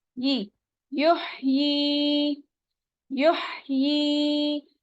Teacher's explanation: और यहाँ पे या मद्दा हो रहा है, या साकिन है, उससे पहले वाले हर्फ के नीचे जेर है, तो यहाँ हम 2 काउंट स्ट्रेच करेंगे।